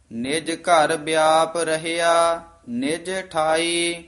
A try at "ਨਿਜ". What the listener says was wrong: ਨਿਜ ਪੋਲਾ ਬੋਲਣਾ ਹੈ। ਨਿਜ ਘਰ ਵਿਆਪ ਰਹਿਆ ਨਿਜ ਠਾਈ।